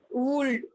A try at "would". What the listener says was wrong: Wood. WOULD. Wood. L is silent. So don't pronounce it. Wood.